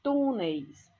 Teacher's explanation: Olha a sílaba tônica no tu, é uma palavra paroxítona